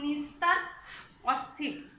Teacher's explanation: দন্ত স এর সঙ্গে যদি ত থ যুক্ত হয় তাহলে এস এর মতো উচ্চারণ হয় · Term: ইংরেজি এস এর মতো